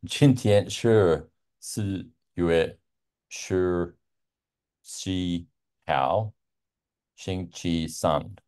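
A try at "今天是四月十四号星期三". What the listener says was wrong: Perfect.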